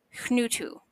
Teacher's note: This is a soft breath before a nasally consonant.